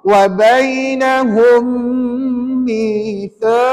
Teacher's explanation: dengar bunyi sengau dalam hidung kita selama 2 second.